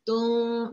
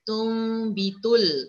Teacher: Menukarkan sesuatu kepada sesuatu. Artinya menukar bunyi nun mati atau tanwin kepada bunyi mim. Tung, dan cara membaca tidak boleh dikapit bibir. Hendaklah direnggangkan bibir itu. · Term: iqlab